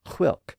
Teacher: the initial sound was much more aspirated in Scots